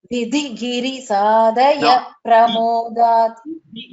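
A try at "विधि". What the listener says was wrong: The Dhakara should come. Vidhi.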